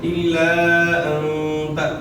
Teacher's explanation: نون ساکن میں غنہ اخفاء کے ساتھ ہوگا